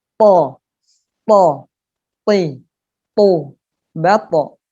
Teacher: Lidah bagian belakang terangkat ke langit-langit mulut sehingga menyebabkan suara menjadi tebal. Po, syaitoni, bukan syaitoni, to, tapi po, syaito. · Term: sifat isti'la